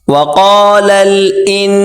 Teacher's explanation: بڑی کاف اس کو موٹا کریں اور لام سے ملائیں ، وقال الانسان، یہاں پر غنہ کریں گے، وقال الانسان ما